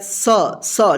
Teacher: जीभ दोनों दांत के बीच में आता है तब इसका साउंड निकलता है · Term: दंत स